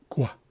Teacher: So, basically what you're doing with a rounded G is you're starting to make a G sound, but before you even make that G sound, you're rounding your lips. So, it's gua.